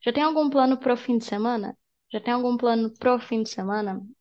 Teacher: Do you notice that when I speak fast, I don't say para, I don't say o, I don't say pra o, I say pro. So I make them together.